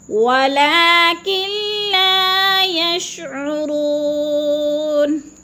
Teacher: ولکن لا یشعرون، ولیکن نہیں پڑھنا، نون ساکن کو نہیں پڑھنا، کاف کو لام کے ساتھ ملا کر ادغام کرنا ہے